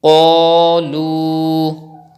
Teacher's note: Qaf, alif, zabar qa, lam, waw, pesh, lu, qalu. Read qaf with thick tone and then stretch alif madda and stretch waw madda.